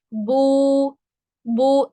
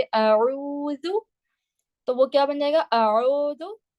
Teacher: आपकी आवाज बो करके ना आए, बू करके आएगी। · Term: वाव मद्दा